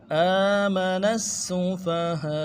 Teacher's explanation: نون کو آگے سین کے ساتھ ملائیں گے، تشدید ہے، زور دیں گے